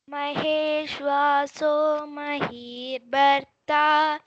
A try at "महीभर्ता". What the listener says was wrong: Mahi bharta. Bha has to be stressed. Mahi bharta.